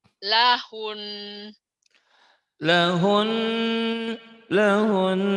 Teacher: nunnya bertasdid agak ditahan lahun lahun gitu kemudian diulang lagi boleh ya biar mantap iya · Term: gunah, gunnah